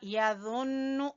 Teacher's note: ज़ा को नरमी से पढ़ेंगे, ठीक है, लेकिन पुर पढ़ेंगे